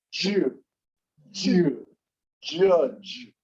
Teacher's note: It does a D and then the J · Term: J sound